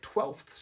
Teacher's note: Now, English, for the record, is quite permissive about what sounds you're allowed to put next to each other compared to a lot of other languages, because we can have like four consonants pushed up against each other in a single syllable in a word like twelfths